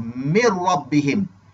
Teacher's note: Maksudnya nun tu terus masuk ke dalam huruf ra. Sebab itu di atas huruf ra itu ada tanda sabdu. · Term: idgham bila gunnah